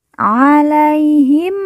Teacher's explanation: mim sukun atau mim mati bertemu dengan huruf ba kita baca dengung